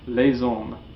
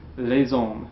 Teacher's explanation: Don't neglect to pronounce that S there. If it's in front of a vowel, pronounce the S in a liaison, like a Z